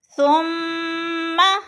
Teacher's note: اکثر مسٹیک کر جاتے ہیں، حرکت کو لمبا کر دیتے ہیں، حرکت کو لمبا نہیں کرنا، ثم اس کو ثم نہیں پڑھنا